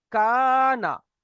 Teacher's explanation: আলিফের ডান দিকে জাবার এসেছে, এক আলিফ পরিমাণ টান দিয়ে পড়তে হবে